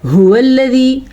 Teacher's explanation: ہا چھاتی سے نکلے گا